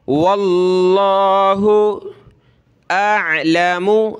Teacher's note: लफ्ज़ अल्लाह से पहले वाव पर ज़बर है तो लफ्ज़ अल्लाह को मोटा करेंगे